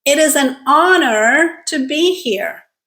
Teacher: In this case, the H is silent. So the word actually starts with honor.